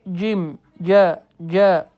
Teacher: Və biz buna cim dedikdə, cim dedikdə görürük ki, bu hərf dilin ortasından çıxmır. Əksinə dilin ucundan çıxır. Düzgün səslənmə isə cim, cə, cə, g, gu bizim Azərbaycan dilində olan c səsi eynə bu cür düzgün səslənmədir.